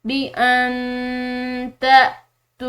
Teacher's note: یہاں پر نون ساکن ہے، اس کے بعد تا حروف اخفا میں سے ہے تو اس نون ساکن پر ہم اخفا کریں گے